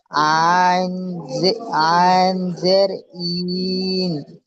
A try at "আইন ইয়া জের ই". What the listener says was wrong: এখানে আইন প্রথম অক্ষরটি পড়ছেন, আইন টান দিয়ে পড়ছেন, তারপরে ইয়া, তারপরে জের, আইন ইয়া জের ই। আইন ইয়া যুক্ত করতে হবে।